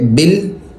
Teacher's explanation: با کو لام سے ملائیں گے، درمیان والا الف نہیں پڑھیں گے